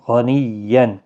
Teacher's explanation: غین مستعلیہ ہے، پر پڑھا جائے گا، غنیًّا، تشدید والے حرف کو سختی کے ساتھ پڑھیں تاکہ تشدید ظاہر ہو۔